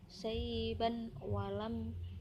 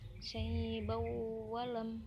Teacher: suara non dimasukkan ke suara wawu, bukan dibaca dengan saiban walam, tapi dibacanya dengan saibau walam. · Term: idgham bihunah